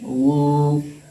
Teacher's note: वाव मद्दा होगा इसलिए कि वाव साकिन से पहले ता के ऊपर पेश है, इसलिए वाव मद्दा होगा। वाव मद्दा को एक अलिफ के बराबर खींच करके अदा करेंगे। वाव पेश वू प्लस वाव साकिन बराबर वाव पेश वू।